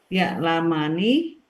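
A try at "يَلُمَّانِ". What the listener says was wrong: Mani, panjangin Bu.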